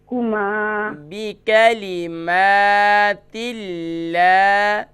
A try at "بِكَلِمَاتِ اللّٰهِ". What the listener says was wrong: دیکھیں با کو بھی نہیں کھینچیں گے اور کاف کو بھی نہیں کھینچیں گے. بکلمات اللہ بکلمہ میم کے بعد الف ہے نا.